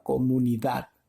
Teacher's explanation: donde termina la última sílaba comunidad es allí donde hay mayor fuerza de voz